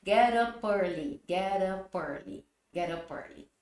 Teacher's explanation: E aí o early começa com vogal também vamos juntar o som né Vamos fazer as famosas elisões né a junção dos sons